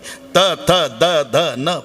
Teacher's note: प्रत्येक वेळेला जीभ दाताला स्पर्श करते, हे दंते आहे.